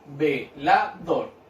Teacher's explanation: Dor es la última sílaba. ¿Ya? Y es donde cargo también la voz. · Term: agudas